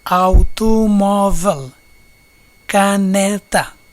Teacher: palavra grave ou paroxítona, palavra cuja penúltima sílaba é tônica